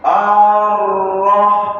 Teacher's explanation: A-nya. A-nya pendek, langsung nyambar huruf ro.